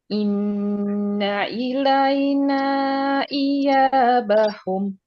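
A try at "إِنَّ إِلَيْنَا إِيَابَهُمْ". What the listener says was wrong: Kurang panjang 4 ya.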